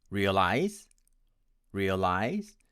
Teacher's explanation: My friends from India tend to pronounce it as realize, with stress on the second syllable.